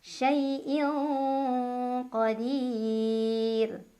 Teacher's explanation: ada ikhfa ab'ad karena ada tanwin kasrah bertemu huruf qaf, dibacanya samar dan dengung, dengungnya lebih besar. Syai'in qadir, dir mad arid li sukun karena ada mad tabi'i bertemu dengan huruf yang disukunkan karena waqaf.